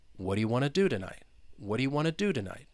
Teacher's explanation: that second do, it is a content word. So you are going to emphasize that.